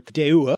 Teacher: Now, this Proto-Indo-European root deu also has is related to a kind of expanded form deua with just a little extra schwa sound on the end